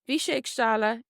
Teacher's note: The end of stála here is silent.